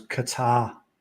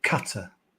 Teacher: So, I've always stressed the second syllable.